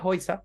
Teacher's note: la A umlaut con la U también se va a pronunciar como un OI.